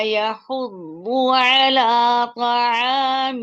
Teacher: ضاد میں ایک تو یہ مشدد ہے، اوپر یہ مفخم ہے، اس کے ساتھ راؤنڈنگ ہے، جیسے نوالا حلق میں گیا اور حلق میں اٹک گیا.